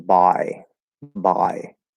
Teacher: for the diphthong in by i use the cot vowel for the first part of the diphthong